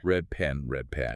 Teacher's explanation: It naturally becomes red pen. The D literally mutates into a B. · Say the phrase red pen quickly. Because the lips are eagerly anticipating clamping together for the bilabial P sound in pen, they prematurely close during the D in red. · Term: assimilation